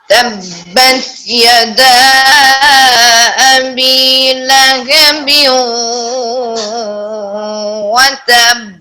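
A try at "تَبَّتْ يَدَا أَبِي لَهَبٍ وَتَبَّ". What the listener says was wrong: اب ٹھہریے یہاں سے، دیکھیے تبت، تا میں قلقلہ نہیں کرنا. میں یہ اب سنے ذرا دھیان سے، تا میں قلقلہ نہیں کرنا.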